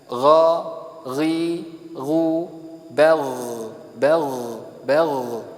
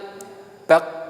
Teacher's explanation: Baik, ini tenggorokan paling atas adalah gha. Ghain dia sifatnya majhurah, ya ini nafasnya tertahan, tetapi dia mempunyai sifat rikhwah, ya ini suaranya mengalir tipis.